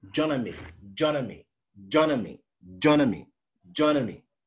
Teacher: the a changes into schwa in an. And the da is deleted because it's followed by a consonant. So it's N. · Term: weakening